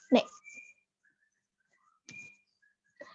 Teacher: Tempat artikulasi orang Indonesia saat menyebutkan ne, yaitu ujung lidah menyentuh alveolar. Seperti gambar yang ada di PPT di samping, sehingga huruf N yang dikeluarkan pada penyebutan ne terdengar dengan jelas.